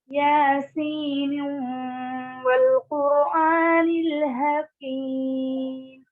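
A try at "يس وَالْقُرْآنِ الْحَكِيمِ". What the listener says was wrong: نیو نہیں، یاسین نیو نہیں.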